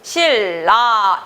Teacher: 니은을 리을, 유음으로 만들어 버렸죠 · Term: 유음화